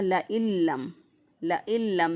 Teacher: ہم نے یہاں پہ ادغام کیا، نون کو لام کے ساتھ ملا کر نون کو لام بنا دیا، لام کا لام میں ادغام کر دیا۔ ہم نے اس کو پڑھا لَإِلَّمْ، لَإِلَّمْ، نون کی آواز اندر نہیں آئے گی، گنہ نہیں کریں گے۔ · نون کی آواز اندر نہیں آئے گی، گنہ نہیں کریں گے۔ نون کو لام بنا کر لام کا لام میں ادغام کر دیا، لام کو لام میں داخل کر دیا، تو اس لیے اس کے اوپر شد آ گئی۔